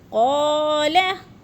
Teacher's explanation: اب قو میں الف مدہ ہے، الف خالی سے پہلے قوف کے اوپر زبر ہے تو الف مدہ. اس کو تھوڑا سا ہم نے قو کو کھینچنا ہے، لا کو نہیں کھینچنا